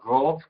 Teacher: Se dice la R a veces como forma gutural, rov, que comienza en el fondo de la garganta.